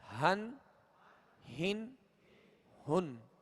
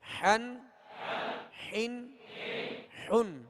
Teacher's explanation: ہا جو ہے وہ حلق کے نچلے حصے سے ادا ہوتی ہے، اور حا جو ہے یہ وسط حلق یعنی درمیان حلق سے ادا ہوتے ہیں۔ حا، دو زبر حن، حا، دو زیر حن، حا، دو پیش حن، حن، حن، حن۔